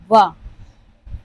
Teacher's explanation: ये व ऐसा है जो दंत ओष्ठ से उच्चारित होता है